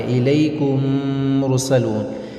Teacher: میم ساکن کے بعد دوسرا میم آ رہا، تو اس میں کیا ہوگا؟ غنہ کے ساتھ اس کو پڑھیں گے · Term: ادغام شفوی